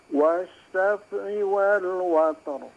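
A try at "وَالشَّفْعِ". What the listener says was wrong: Iya, tadi agak mantul fa-nya ya.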